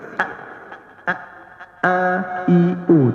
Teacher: Hamzah dia terputus suara dia keras sikit.